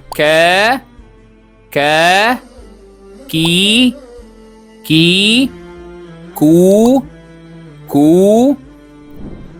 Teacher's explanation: Today's sound is K like in the Arabic word kab book. It's similar to the English K in cat, but in Arabic it's always crisp and without extra puff of air. To pronounce Ca correctly, raise the back of your tongue to touch the soft part of the roof of your mouth, the soft pallet.